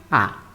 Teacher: adelante ni atrás sino que se mantiene en la parte media se llama vocal baja central baja por la ubicación inferior de la lengua central porque no va ni adelante ni atrás